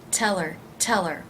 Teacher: if you drop the H you have to be certain that you link it to the word before tell her tell her it's almost like it becomes one word